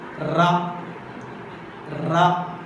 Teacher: articulated by the tip or blade of the tongue touching the teeth ridge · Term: alveolar